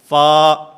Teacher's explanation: اوپر والے 2 دانت جن کو ثنایا علیہ کہا جاتا ہے، ان ثنایا علیہ کے کنارے جس وقت نیچے والے ہونٹ کے اندرونی حصے سے ٹکراتے ہیں تو اس سے فا ادا ہوتا ہے